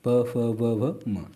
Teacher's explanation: पा वर्ग में ओष्ठ ओष्ठ आते हैं, जैसे होठों का यूज़ होता है